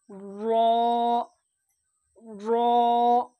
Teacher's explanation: র এর মাখরাজ হচ্ছে জিবের আগার উল্টা পিঠ এবং তার বরাবর উপরের তালু